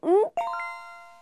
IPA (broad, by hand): ŋk